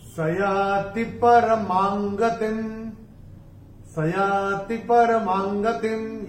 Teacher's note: चौथे चरण में मां के ऊपर अनुस्वार के बाद का अक्षर है ग, और अनुस्वार के बाद जब ग आएगा तो अनुस्वार का उच्चारण होगा अंग।